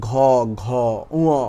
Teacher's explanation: আর ঘুষ আর অঘুষের ভিতরে পার্থক্য কি দেখুন, আপনার গলার ভিতরে যে উচ্চারণ করতেছেন সেই জায়গায় কম্পনটা কেমন হচ্ছে, কম্পন যেমন ক, খ কম্পন কিন্তু বেশি হচ্ছে না, কিন্তু ঘ, ঘ, উ এগুলোতে দেখেন গলার ভিতরে একটা কম্পন বেশি হচ্ছে